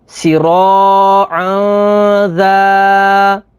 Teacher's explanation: تنوین کے بعد ذال ہے، ذال حروف اخفا میں سے ہے، تو یہاں پر اخفا ہوگا یعنی غنہ کر کے پڑھیں گے